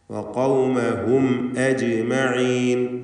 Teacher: അജ് എന്ന് വ്യക്തമാക്കി ഹംസ ഉച്ചരിക്കുക. ഷിദ്ദത്തിൻ്റെ ഹർഫാണ്.